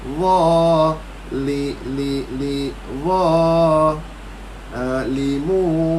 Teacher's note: kaedah dia angkatkan lidah bagi tebalkan huruf tu